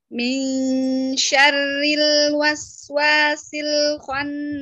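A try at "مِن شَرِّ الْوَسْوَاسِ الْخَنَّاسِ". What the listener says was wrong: Lagi syarri R, jangan kebanyakan. Syarri. Syarril waswa. Min syarril waswasil khannas. Jadinya dia jangan bocor, dia punya inhiraf. Sifat inhiraf itu maksudnya apa? Ro-nya itu jangan bocor. Syari itu kayak kita baca sari roti, sari. Cuman di R-nya jadi dua, sari gitu. Sari roti itu terlalu bocor. Enggak boleh bocor. Dia ada inhiraf, yaitu suara yang bocor di ujung sedikit. Syari. Min syarri.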